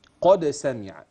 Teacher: الدال تقلقل ليه لانها ساكنه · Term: القلقله